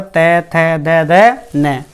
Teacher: दंतीय व्यंजन वे व्यंजन होते हैं जिनमें हमारे जीभ का अगला हिस्सा जाकर दांतों से लगता है